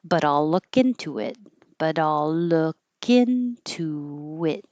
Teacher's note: An invisible W into it and hold that final T.